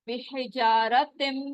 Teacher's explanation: मीम मुशद्दद है, तो वहां पर क्या होगा, आवाज को थोड़ी देर हम रोकेंगे